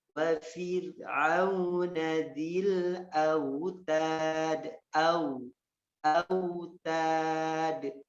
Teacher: Disempurnakan di wawunya, maju bibirnya. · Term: lin